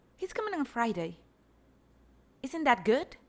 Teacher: Here we have a raised fall that shows excitement.